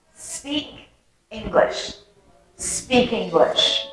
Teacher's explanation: linking a consonant sound with a vowel sound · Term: connected speech